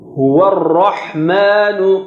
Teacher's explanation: ra is thick, but ma is not thick